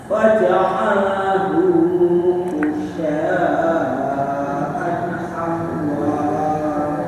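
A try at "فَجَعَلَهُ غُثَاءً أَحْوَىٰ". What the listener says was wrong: Huruf lamnya enggak kelihatan sempurna Bapak. Faja'alahu, terus sinnya, isaknya itu juga kurang kecil ya. Jangan gusa ya. Faja'alahu ghutha, di apa? lidahnya itu di gigi depan atas. Gusa, jangan gusa ya.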